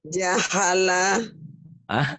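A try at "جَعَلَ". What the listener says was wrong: Ja'ala. Bukan ha ya Bu ya, ingat-ingat ya. Ja'ala.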